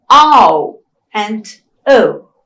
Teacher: So the tongue glides towards the back vowel O. At the same time, O is also a closed vowel. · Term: retracting diphthong